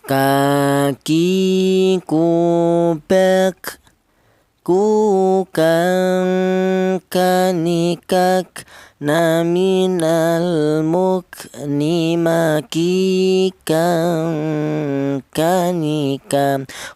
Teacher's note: Untuk huruf kaf ini keluarnya huruf berasal dari pangkal lidah bagian belakang